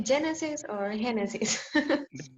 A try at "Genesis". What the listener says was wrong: Yeah, in English will be Genesis. we don't have like a like Jota pronunciation.